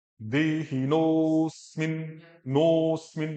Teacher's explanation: देहिनो अस्मिन नहीं बोलना है, अ नहीं बोलना है, देहिनोस्मिन, नोस्मिन, नो अस्मिन नहीं, दोनों प्रोनाउंसिएशन का देखो, नो अस्मिन, एक नोस्मिन।